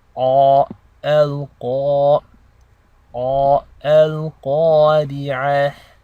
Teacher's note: notice how the thickness of the Qaf also affects the alif that follows afterwards. So when you're pronouncing the alif in the elongation, you're making the same sound as you would when you say awesome in English.